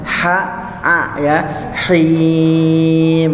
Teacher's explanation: makhraj ha itu ada di tengah tenggorokan nih. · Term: hak kecil